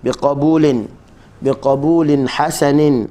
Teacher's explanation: Izhar maksudnya kita jelaskan tanwin ketika mana bertemu dengan ha